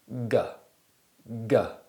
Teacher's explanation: produce the k sound now do it again but this time produce a sound from the back of your throat at the same time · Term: voiced velar plosive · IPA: /ɡ/